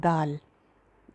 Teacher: ज़ुबान की नोक ऊपर वाले दो दांतों की जड़ में लगे तो दाल की आवाज़ आती है। तो अगर ये ज़ुबान ऊपर लगेगी तो ये मोटा सा दो बन जाएगा, दाल बन जाएगा।